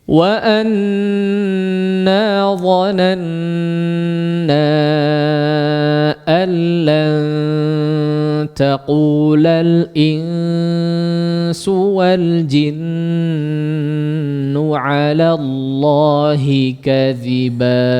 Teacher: ditekan dulu, ya, ditahan dulu gunnahnya, jangan langsung keburu mad yang panjangnya